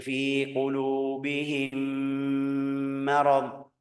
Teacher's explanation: mim ketemu mim jadi mim tasydid. Mim tasydid gunnahnya dua harakat